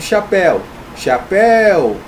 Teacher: a última mais forte é oxítona